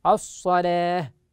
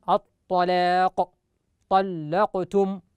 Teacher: ولذلك من الأخطاء التي يخطئ فيها البعض أن البعض يفخم اللام، وهذا ليس من رواية حفص ولا من رواية شعبة، إنما من رواية ورش عن نافع المدني له تغليظ اللام في مثل هذه الحالات. أما الرواة عن عاصم وهما شعبة وحفص فيرققان اللام على أصلها